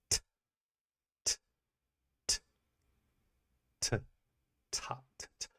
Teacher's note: what you're actually doing is your tongue is a stop because it's stopping the air from escaping.